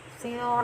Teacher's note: ro berharokat fathah, jadi pangkal lidah bagian dalam harus terangkat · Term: tafkhim